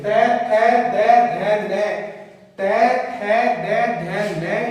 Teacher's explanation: अपनी जीभ जो है वो दांतों से टकराएगी, इसलिए इन सब का उच्चारण स्थान जो है वो दंत से है, इसलिए यहाँ पे सुत्यानुप्रास अलंकार आएगा। · तै थे दे धै नै, तै थे दे धै नै, इन पांचों का अगर अपन उच्चारण करेंगे तो अपनी जीभ जो है वो दांतों से टकराएगी, इसलिए इन सब का उच्चारण स्थान जो है वो दंत से है